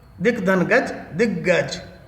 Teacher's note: ग जो है घोष ध्वनि है, इस कारण से अघोष क अपने ग रूप में बदल रहा है